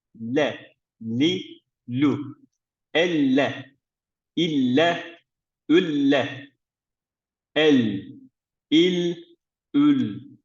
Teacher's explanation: yani üst ön Dişlerimizin hemen arkasında olacak şekilde lam harfimiz okuyoruz